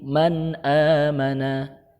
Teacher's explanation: dan goin Kemudian untuk izhar halqi apabila bertemu dengan huruf tersebut maka nun sukun atau tanwin nya dibaca jelas